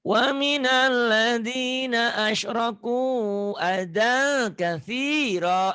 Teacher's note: adanya jadi adang ya, ikhfa, tanwin ketemu kaf.